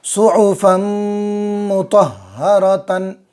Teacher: ہا گلے سے نکالیں گے، گلے کے بیچ والے حصے سے